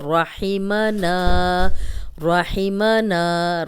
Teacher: را پہ زبر ہے تو را کو موٹا پڑھیں گے۔